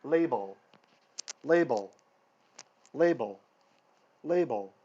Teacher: the first L is like shorter with an attack and if you think about what your tongue is doing label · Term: hard L